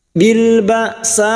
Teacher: hamzah sukun syiddah, tertahannya suara, jangan samakan dengan ain.